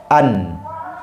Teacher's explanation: nun tertahan suara dari torof lidah